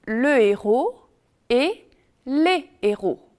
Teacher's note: On dit le héros et les héros, pas de liaison.